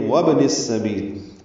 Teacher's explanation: وابن السبیل یہاں واو کو با سے ملانا ہے، ابن کا حمزہ عارضی ہوتا ہے اور با ساکن پہ قلقلہ ہے. وابن السبیل نون کو سین سے ملا دیں گے ملانے کی صورت میں.